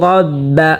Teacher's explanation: রকে মোটা করে পড়তে হবে, রর উপরে জবর হয়েছে। রাব্বা রাব্বা, ওখানে অনেকেই এখানে পড়ে থাকেন রাব্বা, রাব্বা পড়লে শুদ্ধ হবে না।